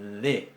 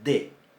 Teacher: Sin embargo, las simbolizamos en nuestro alfabeto latino con un solo signo. Pero cuando decimos dónde, la primera es fricativa, de, y la segunda es oclusiva, de.